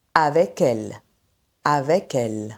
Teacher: Le K de avec migre vers le mot elle. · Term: enchaînements consonantiques